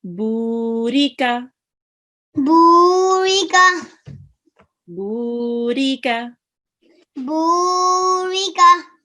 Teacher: It has a Sakoon sign on top, and before it we have a letter of which carries a stroke, which is a Zama. Now we would here prolong the Ba for 2 seconds. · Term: Vaw Madhya